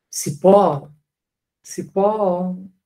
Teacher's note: ele prolonga a sílaba tônica